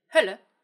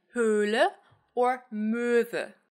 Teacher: There's a short Ö, like in Hölle, and there's a long Ö, like in Höhle or Möwe.